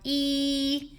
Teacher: When you produce the vowel E, you feel your tongue move forward in the oral cavity.